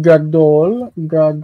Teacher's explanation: Gad has that ah the strong long ah in the first syllable